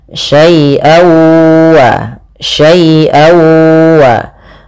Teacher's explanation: Nah, ini sama sebagaimana hukum daripada nun mati ketemu dengan nun, yaitu suara tanwinnya masuk kepada huruf wau. Jadi, awalnya syaian ketemu wau dibaca syai wa syai waa.